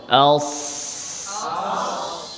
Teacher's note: সদের মাখরাজ জিহ্বার আগা, সামনের নিচের 2 দাঁতের পেট